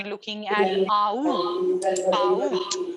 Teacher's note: We do consider it to be back-oriented when you are looking at au, out.